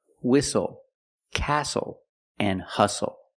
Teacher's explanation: The T is silent with the spelling pattern S-T-L-E. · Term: silent T